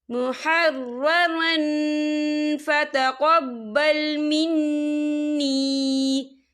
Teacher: تنوین کی آواز کو ناک میں چھپائیں گے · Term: اقفا